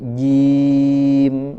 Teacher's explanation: A'udzu billahi minasy syaithanir rajim. Nirrajim, huruf jim suaranya kuatkan ya, tidak ji tapi jim, langsung di tengah lidah ditempelkan ke langit-langit.